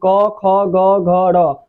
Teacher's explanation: क वर्ग का जो उच्चारण स्थान होता है कंठ होता है